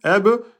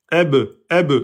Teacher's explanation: Et ba soukoun, eb, vous faites un claquement de lèvres. Eb, eb, c'est les lèvres qui bougent. Eb, eb, pas la mâchoire. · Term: ba soukoun qalqala